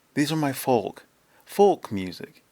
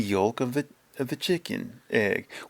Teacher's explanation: people claim that the L in folk or yolk is silent. It's not. I pronounce it.